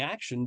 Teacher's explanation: that's because there isn't a t sound there's a sh phoneme